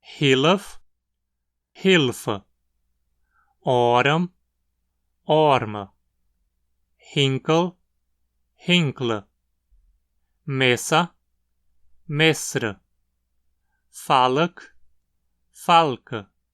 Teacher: uma vogal que é inserida entre duas consoantes para quebrar um encontro consonantal. Aqui especialmente um encontro consonantal no final de uma palavra. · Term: vogal intrusiva